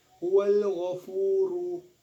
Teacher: hukum bacaan mad tabi'i sebab huruf waw mati setelah dhammah